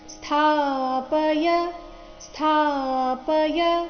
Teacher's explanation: ಸ್ಥ ಮಹಾಪ್ರಾಣ ಅಲ್ಲಿ ಥ ದೀರ್ಘ ಇದೆ